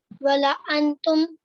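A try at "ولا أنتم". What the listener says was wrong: वला अंतुम, थोड़ा लंबा करो, वला अंतुम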